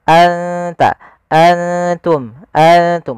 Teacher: nunnya kita samarkan ke huruf ta langsung, seakan-akan kita melafalkan huruf ta. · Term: ikhfa